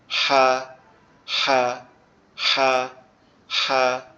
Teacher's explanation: হাটা হচ্ছে আমাদের কণ্ঠনালীর মাঝখান অর্থাৎ কণ্ঠনালীর মধ্যখান থেকে উচ্চারিত হবে, একটু গলাটা চেপে, আওয়াজটা হাঁসের মতো ফ্যাসফ্যাসানি হবে। হা, হা, হা, হা, এরকম ভাবে।